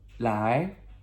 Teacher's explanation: Second tone, ascending tone, that questionable what